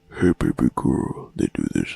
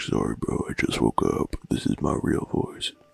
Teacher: when I talk quietly, it kind of makes me do this vocal fry thing.